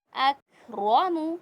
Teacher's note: रा को ऊपर पढ़ेंगे, रा पे ज़बर है